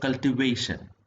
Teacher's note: The stressed syllable is the third one. ഇതിനകത്ത് ഏറ്റവും കൂടുതൽ എംഫസിസ് വരുന്നത് എവിടെയാണെന്ന് ചോദിച്ചു കഴിഞ്ഞാൽ ഈ തേർഡ് സിലബിൾ ആണ്, വിച്ച് ഇസ് വേ.